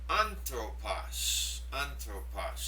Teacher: this word has a smooth breathing and an accent over the first syllable. And that gets the stress.